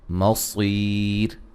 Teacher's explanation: صاد کو موٹا ادا کریں گے، یا مدہ ہے، وقفاً را کو باریک پڑھا جائے گا اور مد کے ساتھ پڑھ سکتے ہیں، ملانے کی صورت میں را موٹی ہوگی۔